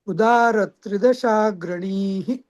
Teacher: ग्रणी आधी दीर्घ म्हणायचा आणि मग विसर्ग करायचा